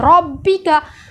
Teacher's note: रब्बिका र को गोल पढ़ा जा रहा है। बा में कलकला करते हुए तजदीद अदा की जा रही है। सख्ती के साथ